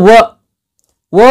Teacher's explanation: ವ ಎಂಬ ಅಕ್ಷರ ದಂತ ಮತ್ತು ಹಲ್ಲು ಮತ್ತು ತುಟಿ ಎರಡರ ಸಹಾಯದಿಂದ ಈ ಅಕ್ಷರವನ್ನ ಉಚ್ಚಾರ ಮಾಡ್ತೀವಿ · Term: ದಂತೋಷ್ಠ